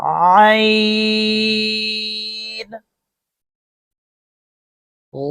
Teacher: عین کا جو یہ لفظ ہے حلق کے بیچ سے ادا ہوتا ہے